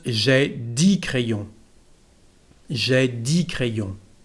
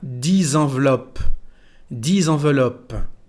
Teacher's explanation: no se pronuncia la X, solamente decimos di